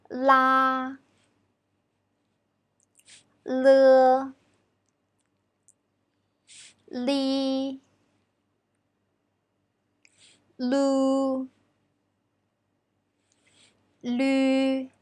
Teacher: When pronounce L, the tongue position is further behind the gum, and the sides of your tongue don't touch your gum. It sounds like L in English word lip.